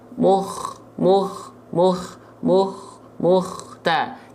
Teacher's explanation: seperti ngorok gitu ya tapi enggak berlebihan hanya sedikit